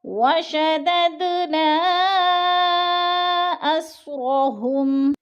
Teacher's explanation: خلقناہم وشددنا، وشدد دال ساکن حروف قلقلہ میں سے تو قلقلہ ہو رہا ہے، ادھر ہلا کر پڑھیں گے جیسے وشدد نا اسرا، نا پہ مد منفصل ہے، 4 الفی مد ہے کیونکہ حروف مدہ کے بعد حمزہ دوسرے کلمے میں ہے تو مد منفصل، اس کو ہم نے 4 الف کے برابر لمبا کر کے پڑھنا ہے